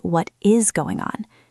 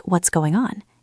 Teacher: The T in what often disappears or becomes a very soft stop and the is blends in. It sounds more like what's going on.